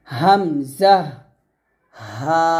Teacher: এই গলার শুরু থেকে এই হামজা এবং হা উচ্চারণ করতে হবে